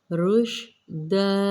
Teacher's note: شین کو منہ بھر کے ادا کیا جاتا ہے، رشدا، دو زبر کو ایک میں کنورٹ کریں گے، الف مدہ کے قاعدے پہ وقف کریں گے، مد عارض کرتے ہوئے رشدا۔